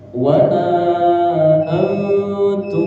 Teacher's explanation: samar-samarnya ng-nya itu dua harakat. Jadi kita berusaha mengucapkan nun tapi mau ke huruf ta. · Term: ikhfa